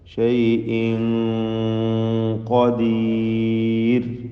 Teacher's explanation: ഷൈഇൻ ഇതിലെ തൻവീനിനെ ഇഖ്ഫ ഹഖീഖി നൽകി മറച്ച് മണിക്കണം, അവ്യക്തമാക്കി മണിച്ചുകൊണ്ട് ഉച്ചരിക്കണം. മണിക്കലിൽ തഫ്ഖീം നൽകേണ്ടതാണ്.